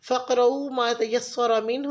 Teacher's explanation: क़ाफ पे लाइट कलकला करेंगे। तयस्सरा में रॉ को पुर पढ़ेंगे।